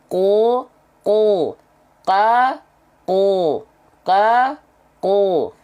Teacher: pangkal lidahnya diangkat ke atas. Ya, karena diangkat ke atas, bunyi vokal A itu akan otomatis menjadi O. Ko, asalnya K menjadi ko, Ka, ko, ko. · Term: isti'la